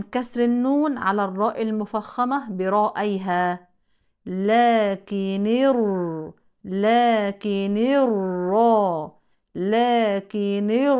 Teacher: الساكنين هي الساكن الاول وتلتقي عند الوصل بالراء الساكنه من المشدده فتحرك النون بالكسر للتخلص من التقاء الساكنين لكن الرا هنا ننتبه الراء هنا مشدده بالفتح كما قلنا لها